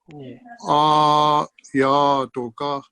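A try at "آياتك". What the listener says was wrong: اگر ہم اس کو آیاتو پڑھ دیں تو یہاں پہ ہم نے فتحہ کی بجائے فتحہ اشباعیہ پڑھ دیا. یہ ہے آیتو کا.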